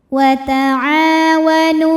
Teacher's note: Nu ini hukumnya juga mad tabi'i zahiri. Karena ada waw sukun didahului baris dhammah, maka huruf nun panjang 2 harokat.